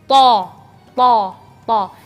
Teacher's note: jadi tho melafalnya tho dan tidak ada angin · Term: huruf tho